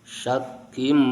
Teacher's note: Wa innahum lafi syakkin, tanwin bertemu mim, idgham dengan gunnah